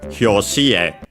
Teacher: It's a Chinese compound, by the way, but it's accented on the last syllable